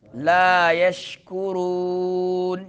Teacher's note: شین میں کیا ہوگا؟ تفشی، آواز پھیلتی ہے منہ میں